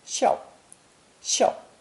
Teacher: The third character in this lesson is a combination of small and flesh, pronounced fourth tone